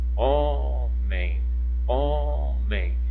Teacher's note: a penúltima sílaba vai ser aquela sílaba tônica aquela que eu pronuncio com mais intensidade mais força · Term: paroxítona